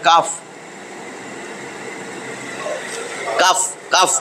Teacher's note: ওই জিহ্বার গোড়া থেকে আসবে